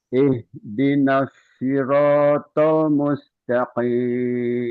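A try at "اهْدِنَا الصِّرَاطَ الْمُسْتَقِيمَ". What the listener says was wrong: Hampir. To-nya aja yang latihan yang tebal. Ini bukan shin, bukan sh. Mulutnya nggak boleh bergerak. Ihdinas bukan shi, tapi tol.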